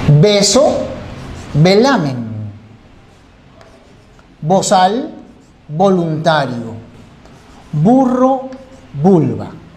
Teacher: el fonema bilabial se representa con la B y con la V. La pronunciación es exactamente igual.